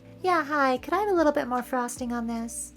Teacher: bit sounds a little bit more like bet when I say it fast.